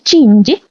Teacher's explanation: நாவின் நடுவுல இருந்து அன்னத்தின் நடுவுல இருந்து பிறக்கக்கூடிய எழுத்து